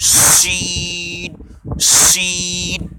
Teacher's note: इसको मुंह भर के निकालेंगे, जबान के बीच से मुंह भर के हवा के साथ, भारी आवाज़ के साथ, शीन, शीन। शुरू में आप थोड़ी निकालेंगे, 10% निकलेगी, 20% निकलेंगी, लेकिन आप मशक करेंगे, इसकी प्रैक्टिस करेंगे तो ये पूरी शीन सही तरीके से अदा हो जाएगी।